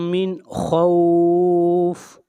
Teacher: وآمنہم من خوف، خوف کے اوپر مد عارض لین ہو رہا ہے، یہاں پر حروف لین واو کے بعد عارضی سکون ہے